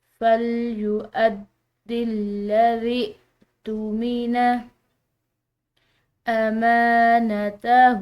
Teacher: ذال کے بعد حمزہ تو حمزہ کو جھٹکے سے پڑھا جاتا ہے